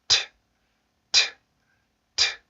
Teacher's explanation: T 발음을 할 때는 치조에 공기를 모았다가 혀를 이용해서 치조에 공기를 모았다가 공기를 터트리면서 발음해주는 폐쇄음이죠. 그 다음에 무성음이기 때문에 성대 울림을 넣어서는 안 되고요.